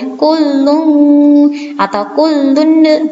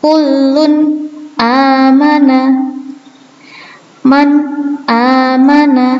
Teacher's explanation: ketika nun sukun atau tanwin bertemu dengan hamzah, bacanya harus jelas. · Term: idhar halqi